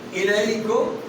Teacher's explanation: یا سے پیچھے زبر آ گئی, یا ساکن ہے, لین ہے, نرمی کریں